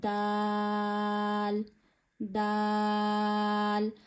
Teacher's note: आपने अपनी जुबान को ऊपर के दांतों की रूट्स पर यानी जड़ों पर लगाना है और आपने अदा करना है दाल। जड़े वह होती हैं जहां से आपके दांत उगना शुरू होते हैं।